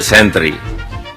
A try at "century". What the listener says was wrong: Century. The letter T in the middle of century is supposed to be pronounced with the consonant ch instead of stressing t. So it becomes century instead of century. This is a major mistake that most people still make nowadays.